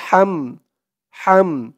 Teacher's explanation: হার আওয়াজটা গলার ভিতর থেকে চিকুন করে আনতে হবে